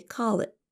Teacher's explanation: And our listeners should also notice that we don't really pronounce the letter T at the end of the phrase. Instead of saying call it, we say call it with a held T.